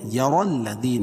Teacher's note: را پور پڑھی جائے گی کہ را کے اوپر زبر ہے. الذی یا مدہ.